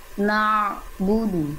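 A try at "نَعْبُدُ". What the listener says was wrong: Nah, itu kan udah bagus, tapi di ujungnya masih na'budu. Nah, itu kan ada henti tuh, jangan. Na'budu. Na'budu. Na'budu. Na'budu.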